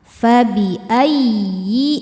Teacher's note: Fabiayyi ya tasydid yang tidak didahului tanwin atau nun sukun jangan ditahan ya. Cukup dibaca dengan nabr. Naikkan intonasi suara kita. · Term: naber